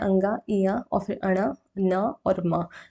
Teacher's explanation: नाक की सहायता से इन व्यंजनों का उच्चारण किया जाता है। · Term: अनुनासिक